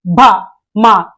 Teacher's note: అనేవి కలవడం జరుగుతుంది బెదవులు అనేవి కలవడం జరుగుతుంది భ మ ఇవన్నీ కూడా పెదవుల సహాయంతో పలికే అక్షరాలను ఓష్ట్యాలు అని అంటారండి